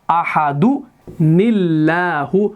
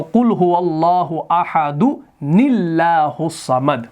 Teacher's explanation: جب یہاں پر دو ساکن جمع ہو جاتے ہیں تو ہم ایک چھوٹا سا نون لے آتے ہیں, وہ ہمارا ہوتا ہے نون قطنی, ایسے نون زیر والا